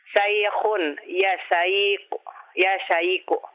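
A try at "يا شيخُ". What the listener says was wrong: Ya Syekhu. Mana itu kha. Kha. Kha. Khu. Ya Syekhu.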